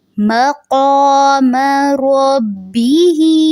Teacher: جو قاف ہے اس کو بھی آپ نے پر رکھنا ہے، اس کو کا نہیں پڑھیں گے، قا پڑھیں گے